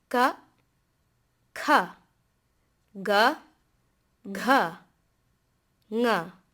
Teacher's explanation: the gutturals are made by lifting the back of the tongue and lifting it ever so slightly towards the soft palate. The sound comes from the back of the mouth.